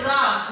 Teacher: रा को लुंठित ऐसे याद रख लो, लुढ़कता हुआ रा बोला जा रहा है